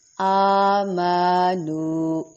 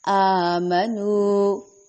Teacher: ایک الف کے برابر لمبا کریں گے. آمنو آ اور نو دونوں کو لمبا کریں گے. ان دونوں کے درمیان میں ما ہے لیکن اس کو لمبا ہرگز نہیں کریں گے ورنہ بہت بڑی مسٹیک ہو جائے گی.